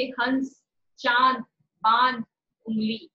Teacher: अनुनासिक के उच्चारण में दोनों होठ खुले रहते हैं, मुंह और नाक दोनों से हवा निकलती है। नाक में अपेक्षाकृत कम कंपन होता है, जैसे हंस, चांद, बांध, उंगली।